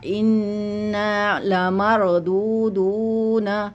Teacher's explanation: वाव है थोड़ा सा लंबा, एक अलिफ के बराबर, क्योंकि हरूफ मद्दा हो गया।